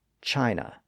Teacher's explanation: It's formed by shaping the tongue in a somewhat neutral position. So it's not really a high vowel or a low vowel or a front vowel or a back vowel. It just sort of sits there in the middle of the oral cavity. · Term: schwa